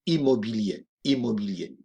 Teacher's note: parfois vous avez la tentation de dire un, de faire une nasalisation, et là, il n'y a pas de nasalisation. On dira I, immobilier.